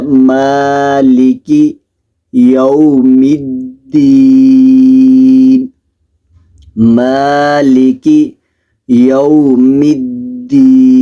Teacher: مقدار لمبا کر کے پڑھنا ہے، الرحمن الرحیم، مالکی، میم کو بھی لمبا کر کے پڑھنا ہے، کاف کو باریک پڑھنا ہے